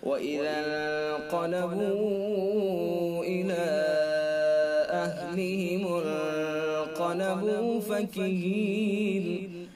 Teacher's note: اور آگے انقلبوا، واو حرف مدہ ہے، واو حرف مدہ کے بعد حمزہ دوسرے لفظ میں، لہذا مد منفصل ہوگا · وَإِذَا انقلبوا، نون ساکن ہے، نون ساکن کے بعد اخفاء کے 15 حروف میں سے قاف ہے، لہذا اخفاء حقیقی ہوگا. غنہ کے ساتھ خیشیوں سے ادا کریں گے. اور قاف چونکہ حروف مستعلیہ میں سے بھی ہے، اس لیے قاف کو پر یعنی موٹا بھی پڑھیں گے.